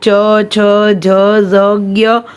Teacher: तालव्य, तो वो हम लोग च, छ, झ, ज़, ज्ञ, वो हम लोग हमारी तालु के मदद से बोलते हैं